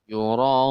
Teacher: Ra-nya itu adalah mad tabi'i bertemu hamzah di dalam satu kata. Maka hukumnya mad wajib muttasil. Dibaca 6 harakat. Yura'un. Panjang ya, 6 ketukan.